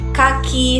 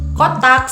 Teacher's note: ke itu termasuk ke bagian plosif adanya letupan ketika kita menyebutkan huruf ke